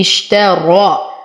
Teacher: أصبر على الشين أعطيها صفة التفشي